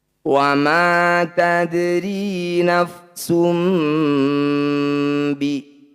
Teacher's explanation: Ini menunjukkan bahwa di sini ada bacaan iklab. Rapatkan bibir, dengungkan 2 harokat.